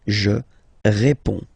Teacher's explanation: you can see that D and S here are not pronounced.